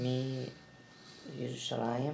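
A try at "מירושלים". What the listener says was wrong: Mirushalayim. When you add the mem, you don't pronounce you. Just say Mirushalayim. Without you. Without ye. Mirushalayim. Without ye. Mirushalayim. Mirushalayim.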